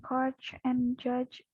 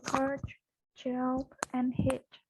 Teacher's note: These are the sounds in coach and judge both at the beginning and the end of these words. In the initial part of ch and j, the tip of the tongue is at the rear of the alveolar ridge, somehow back of its position in words like this. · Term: affricates